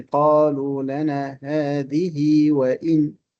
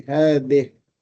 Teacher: Once you stop, you drop the ya, you drop the kasra, and you have to clear the ha because it is weak.